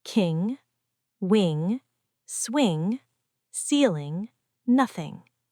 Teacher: The tongue touches the back of the mouth, and air flows through the nose. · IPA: /ŋ/